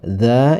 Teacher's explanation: fathah bertemu dengan alif dibaca panjangnya dua harakat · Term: Mad thbii'i